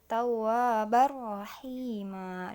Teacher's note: idgham bila gunnah tidak ditahan, jadi langsung tawwabar rahima, bukan tawwabar rahima.